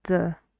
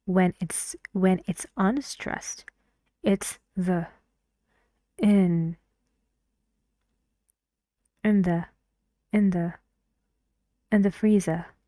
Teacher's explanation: It's a function word, and in a sentence, when it's not stressed, we should say it like the. No energy in the vowel. No energy. Just very tired.